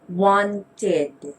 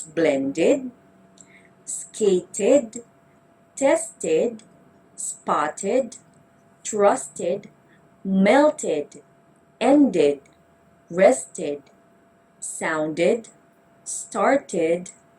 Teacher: id sound is pronounced as a separate syllable